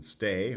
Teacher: it can be unaspirated when it does not start the syllable